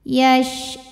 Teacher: syin punya sifat yang tidak memiliki lawan namanya tafasyi artinya menyebarkan angin di dalam mulut